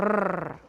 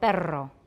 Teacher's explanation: we've got a plain R, which is voiced alveolar trill